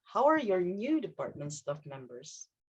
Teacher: So the intonation actually goes down, dipping to the low part.